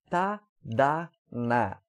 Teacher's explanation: consoantes agora alveolares, que são feitas um pouquinho acima dos dentes